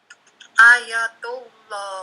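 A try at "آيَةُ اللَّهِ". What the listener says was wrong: Nah, panjang pendeknya. Ulangi panjang pendeknya. Nah, panjang dua harakat. A-nya panjang tidak? A hamzah depan ini panjang tidak? Ada alif panjang ya.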